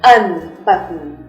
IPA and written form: ʌnˈbʌtn (unbutton)